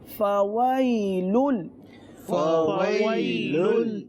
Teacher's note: پہلے فا ہے، پھر واو ہے جس میں ہونٹ گول کرنے ہیں، اور اس کے بعد 2 لام ایک ساتھ پڑھنے ہیں.